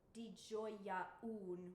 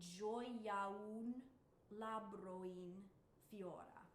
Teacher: there's no glottal in italian so these just get rolled one into the next